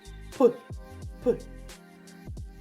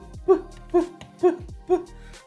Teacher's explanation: так ротик закритий губи стиснуті вони не випускають звук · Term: звук п